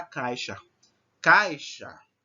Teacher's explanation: o A é mais forte que o I. Então, o A é classificado dentro da fonética como uma vogal e o I como uma semivogal, porque ela tem um som mais fraco, certo? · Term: ditongo